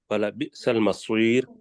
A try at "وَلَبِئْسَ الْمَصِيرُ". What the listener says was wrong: ماشاءاللہ، ٹھیک ہو گیا۔